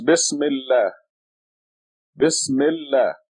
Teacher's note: this article al becomes silent when you read the two words together